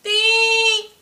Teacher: The microwave always say, ding! It has to be high, but it's very flat. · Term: first term